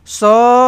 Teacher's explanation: Bunyikan kahak sekejap dekat huruf kha tu sebab dia bersabdu. Kena tekankan sekejap.